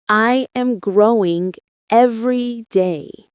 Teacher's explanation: Notice how growing has a soft gr sound and every flows smoothly into day. Let your voice glide gently between the words.